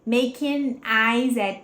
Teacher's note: junta esse S com esse at, vira Z.